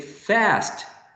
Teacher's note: But some people in United States, the people who use, I don't know, general American, say fast, using the trap.